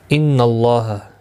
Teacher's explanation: اللہ کا لام زبر کی وجہ سے پر پڑھا جائے گا